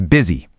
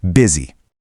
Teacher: It really looks like it should be boozy. But the U is actually pronounced like a short I.